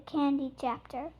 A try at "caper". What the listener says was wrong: there's no h sh there's no h app close long a caper